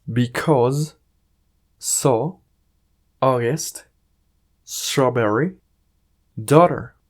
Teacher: cuando una palabra contiene AU o AW, genera un sonido como el de una O en español.